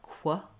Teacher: I move from the k right directly into the w, qu. That's how we pronounce this qu in many words in English. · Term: k and w sounds together